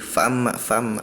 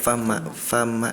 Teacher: Jadi terdengarnya huruf hamzahnya seperti samar